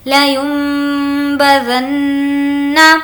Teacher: نون پر تشدید ہے غنہ کریں گے